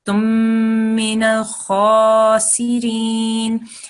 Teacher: you made a little bit more of a nasal sound that second time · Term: mim gunna